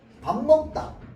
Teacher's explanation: 뒤에 있는 미음 때문에 앞에 있는 비읍이 미음으로 변하게 된다. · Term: 비음화